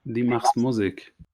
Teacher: And Musik accented on the first syllable.